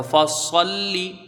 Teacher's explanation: بچے کہتے ہیں کہ سواد پر ہو رہا ہے تو اس کے ساتھ میں لام بھی پر فصلی، اس طرح سے تو لام یہاں پر باریک پڑھا جائے گا. فصلی سواد پر ہوگا، حروف مستعلیہ ہے، مستعلیہ میں سے ہے، لیکن لام باریک پڑھا جائے گا